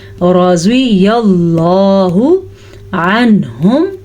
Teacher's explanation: آگے یا کو اللہ کے نام کے ساتھ جوڑ دینا اور اللہ کے نام کو پر پڑھنا ہے · رضی اللہ عنہم ورضوا عنہ، پھر سے وہی لفظ آ گیا، سب سے پہلے یہاں بھی اظہار، یہاں بھی اظہار، نون کو ظاہر کر کے پڑھنا ہے کیونکہ اس کے بعد حروف حلقی میں سے ہا آیا ہوا ہے. ورزو، واو مدہ، اور اسے کیسے پڑھنا ہے؟